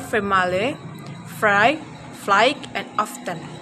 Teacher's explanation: Labiodental sound produced by contacting the lower lip and upper teeth, as in sound f in the word family, fry, fly, and often.